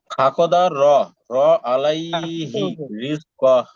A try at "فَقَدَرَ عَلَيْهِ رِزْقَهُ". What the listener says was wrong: হ্যাঁ ভাই আলাই, এখানে টানা যাবে না, আলাইহি তাড়াতাড়ি, ঠিক আছে।